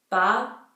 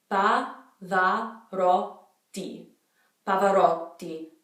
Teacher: But basically the P, you're not expelling as much air. It's a much tighter P.